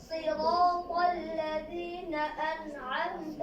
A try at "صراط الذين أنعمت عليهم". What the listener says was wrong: এই যে আন, এই যে একটু আগে বলছিলাম না যে নুনের সাকিন সুইটা যায় আপনাদের অনেকের। সিরাতাল্লাযীনা আন'আমতা, বলেন এটা কিভাবে করবেন? এই দেখেন, ফলো করেন। এটা ধরেন আপনার জিহ্বার আগে, এটা কি? এটা আরে বলেন না কেন, এটা কি জিহ্বার? এটা হলো উপরের তালু, বুঝতে পারছেন? ভালো মতো খেয়াল করেন।